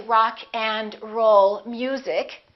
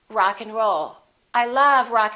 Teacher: in this case we reduce the A and the D